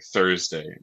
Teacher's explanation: So you're like aspirating out the th. And then eth is sort of like the or like bath. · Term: thorn